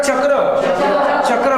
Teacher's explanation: च म्हणताना जीभ टाळूला लागते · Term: तालव्य